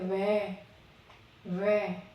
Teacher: यहाँ पर दांत और होठ दोनों ही काम आते हैं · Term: दंतोष्ठ